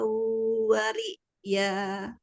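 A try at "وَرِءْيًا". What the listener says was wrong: Ulangi. Wariya itu bukan naber ya, itu hamzah aja sukun, jadi jangan ya, jangan terlalu ditekan. Wariya. Bukan tasdid, tapi hanya hamzah sukun aja.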